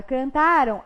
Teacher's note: na palavra cantaram, a M tem som de ão. Significa que, então, eu não tenho a presença de um encontro vocálico na escrita, mas eu tenho a presença de um encontro vocálico na pronúncia. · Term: ditongo